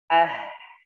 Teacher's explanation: Kemudian ha ketika dalam keadaan sukun jadi ah. Jadi dikeluarkan nafasnya.